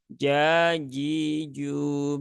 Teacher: karena Jim kan dia sifatnya bukan hams ya tapi jahr